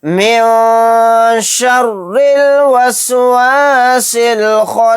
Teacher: یعنی نون کی آواز کو ناک میں چھپا کر اخفا کریں گے